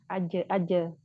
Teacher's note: jadi ketika pengucapan huruf Jim ini tidak ada suara yang mengalir ya tidak ada juga nafas yang mengalir ya bisa dibuktikan diletakkan tangannya di depan mulut ketika mengucapkan huruf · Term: tertahan